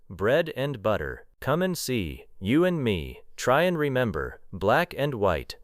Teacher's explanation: On day two, focus on weak and. Listen for and becoming un, n, or a very light sound.